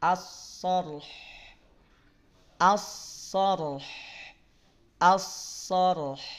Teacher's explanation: Hanya tipis. Yang naik pangkal lidah hanya sod dan ro. Haknya tipis.